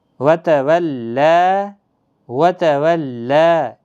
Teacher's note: کھڑا زبر کے ساتھ ہی وقف کریں گے ایک الف کے برابر کھینچ کر